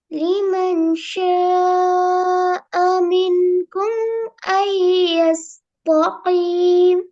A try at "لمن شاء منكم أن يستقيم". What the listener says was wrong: எஸ் தா அல்ல, எஸ் த. ஈ வரப்படாது.